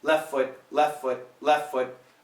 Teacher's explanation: Here we got two Fs. They will absolutely cancel the T.